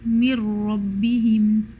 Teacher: there is no sign or trace of noon left. We are only left with two ra's. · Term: idgham kamil